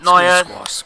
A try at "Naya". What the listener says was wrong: Naya. No. It's with an A.